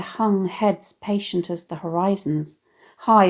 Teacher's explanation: The alliteration of the smooth aspirated /h/ sound in “hung heads”, “horizons” and “High”